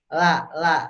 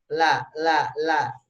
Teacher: di tempat gusi dan belum belum ngadu ke giginya